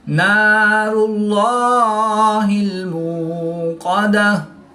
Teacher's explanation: قاف حروف مستعلیہ میں سے ہے تو اس کو پوری یعنی موٹا پڑھیں گے۔ · گول تا کو وقف کی حالت میں ہاں ساکن سے تبدیل کر کے پڑھیں گے۔